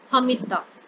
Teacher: چونکہ ان دونوں کی ساؤنڈز اور دونوں کے مخرج ایک دوسرے کے بہت زیادہ قریب ہے، اس وجہ سے ہم یہاں پہ دال کو اسکپ کر دیں گے، تا پر شد ڈال کر زبر لگا دیں گے